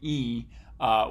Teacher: e which is nice high vowel and oftentimes for a speaker like me my f1 for EE is gonna be about 300 Hertz